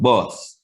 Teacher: The O sound in Patois, in the Jamaican language, is much more wide. The jaw is much more wide than in the English U sound, bus. So you have bus, your mouth is about this wide, and then you have bus, your mouth is that wide.